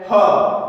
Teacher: उसमें ह है कंठ के अंतर्गत आता है तो इन्हें हम कंठ, यानी इनका उच्चारण कंठ से होता है तो इसे हम कंठव्य ऊष्म व्यंजन कहेंगे।